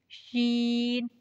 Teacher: शीन जुबान के दरमियान और तालों के दरमियान से अदा होता है